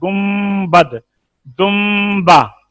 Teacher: तो ये नून जब मीम से बदलता है ना तो इसको कहते हैं मीम मुनकलिब, तो इसमें भी गुन्ना होता है